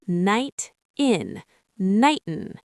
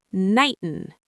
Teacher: the T in night links directly to the I in in